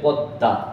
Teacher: দয়ের সাথে ম থাকার কারণে দটা দুইবার উচ্চারণ হয়েছে